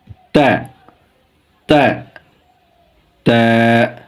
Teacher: উচ্চারণের স্থান জিহ্বার মাথা সামনের উপরে দাঁতের গোড়ার সঙ্গে লাগিয়ে